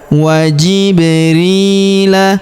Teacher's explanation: Warusulihi wa jibrila. Huruf ba berharakat sukun kita pantulkan atau kita qalqalahkan